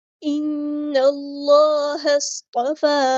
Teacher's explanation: نے آپ لوگوں کو یہ ڈیٹیل بتائی ہے، ان اللہ اصطفی، ہاں کو ہم نے صاد کے ساتھ ملا دینا ہے، حمزۃ الوصل ہمارا ڈراپ ہو جائے گا ، صاد ہمارا ہیوی لیٹر ہے پورا ادا کریں گے، اصطفی،